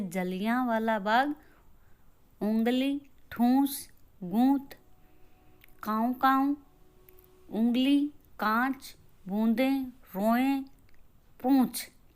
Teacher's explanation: इन ध्वनियों का उच्चारण मुंह और नाक दोनों के संयोग से होता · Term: अनुनासिक